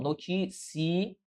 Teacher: Notícia é uma paroxítona. Paroxítona, ou seja, a sílaba tônica recai sobre a penúltima sílaba